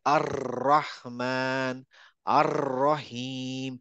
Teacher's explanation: আর রহমান একটা রটা কাঁপতে থাকে